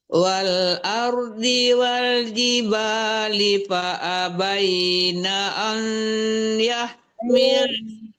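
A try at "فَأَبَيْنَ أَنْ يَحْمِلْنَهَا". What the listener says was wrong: Nah, ai ke hidung ya, jangan menggantung-gantung. Itu ke hidung, itu dengung ya.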